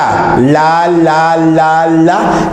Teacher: vas a ver que la punta de la lengua llamada ápice se va sobre los dientes superiores